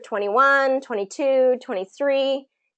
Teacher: the emphasis goes up on that second part of the word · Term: new information